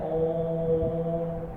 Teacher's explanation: इसमें वर्ण या अक्षर तो दो ही होते हैं, लेकिन ये काफी लंबी देर तक बोला जाता है ओम, यानी कि एक मात्रा से भी ज्यादा समय लगा, दो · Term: प्लुत